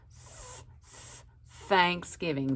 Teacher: you put your tongue between your teeth and you blow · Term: th sound